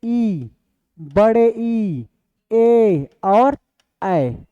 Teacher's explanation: ऐसा स्वर वर्ण जिनका उच्चारण हमारे जीभ का अग्र भाग से हो, क्या कहलाता है, अग्र स्वर वर्ण कहलाता है।